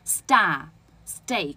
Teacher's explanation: 所以就是当你这个 st 出现在元音前面，你就要让它变成不送气的